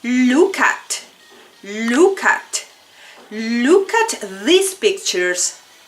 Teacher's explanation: linking the last consonant sound with the first vowel sound. Vamos a unir el sonido de la palabra que tenga un sonido consonante con la siguiente palabra que tiene sonido de vocal. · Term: linking words